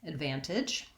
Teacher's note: Today's word is the word advantage, and the word advantage has 3 syllables, and the stress is on the second syllable, van. And so we see that marked in the dictionary with this little line here before the stress syllable.